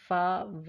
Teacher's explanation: अब हमारे पास फा, वा लेबियो डेंटल है, हमारे अपर टीथ और लोअर लिप जो है एक दूसरे के साथ मिलते हैं